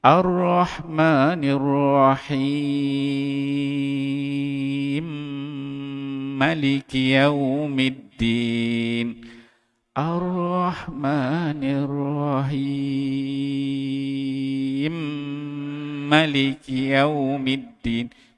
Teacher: Ambil 6 harakat, kemudian naik dengung 2 harakat, kemudian ma tu dipendekkan.